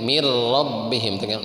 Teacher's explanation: Jadi idghamkeun. Nunnya ente dibaca min tapi masuk ke ro. Mir robbihim tapi entong ditahan.